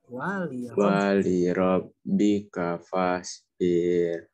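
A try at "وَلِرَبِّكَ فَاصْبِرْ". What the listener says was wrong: Nah, birnya kalau seperti ini dibacanya tidak diayun ya. Wali rabbika fasbir. Birnya tipis. Di sini ada kondisi huruf atau tentang ro ya, kita akan coba ulas. Wali ro di sini termasuk tebal atau tipis? Tebal itu tadi bahasa Arabnya tafhim apa tarkik? Ya benar, tafhim itu tebal ya, tarkik itu tipis.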